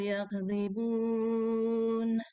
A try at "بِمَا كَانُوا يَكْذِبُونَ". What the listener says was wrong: Turun. Bima kanu yakdzibun. Ibu turunin bacanya, ulangi lagi. Bima kanu yakdzibun. Gitu turun kan Nah, jadi kalau iramanya Ibu naik ke atas kagok Bu itu beres tawarek nului gitu.